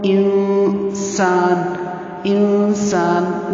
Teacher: انسان انسان نرمی سے مراد یہ ہے کہ غننے میں تھوڑی سی سختی ہوتی ہے لیکن نون ساکن کی آواز ناک میں جائے گی. نرمی کے ساتھ ایسے ہم اخفا کریں گے.